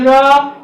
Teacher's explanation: रा कहेंगे तो जीभ पूरा लुढ़क करके मुड़ जाती है, इसीलिए इसको जो है हम लुंठित वर्ण कहते हैं।